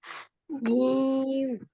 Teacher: जुबान आगे पीछे से कहीं नहीं हिलती, सिर्फ वो दरमियानी हिस्सा ऊपर उठ जाता है बस।